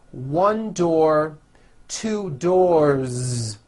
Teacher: with a voiced Z ending